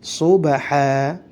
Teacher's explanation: ba sukun, sifatnya adalah qalqalah, harus difantulkan